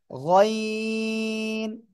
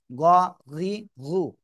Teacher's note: গাইন নয়, এটা হবে গইন। গইন, তিন আলিফ টান হবে, মোটা আওয়াজে, গলার শেষ ভাগ থেকে উচ্চারণ হবে।